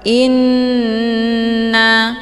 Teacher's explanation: hamzahnya dileburkan ke dalam huruf nun dengan cara ditekan kemudian ditahan lebih kurang 2 kali ketukan. Inna. Hukum bacaan ghunnah musyaddadah dibacanya sambil didengungkan.